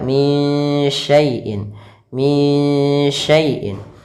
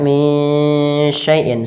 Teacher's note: cara membacanya itu samarkan suara nunnya kepada huruf syin. Maka minyaiin sambil ditahan ghunahnya dua harakat. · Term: disamarkan